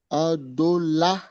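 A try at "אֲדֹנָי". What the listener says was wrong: Non, non, cette lettre-là, c'est un noun. Et puis, le yod qui est à la fin, ça fait. Fais la liaison entre A et Y. Tu fais une liaison. Adonai.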